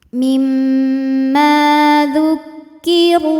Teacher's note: Huruf ra dibunyikan secara tafkhim karena berbaris dhammah, maka ra dibunyikan dengan tebal.